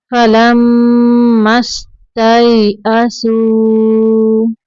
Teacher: मीम मुशद्दद पे गुन्ना करना है, मीम को सीन के अंदर मिलाएंगे।